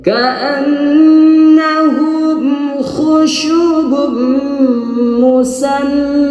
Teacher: Ka'an gunnah dua harakat, wajibul gunnah atau gunnah musyaddadah, nun yang bertasydid, gunnah yang bertasydid.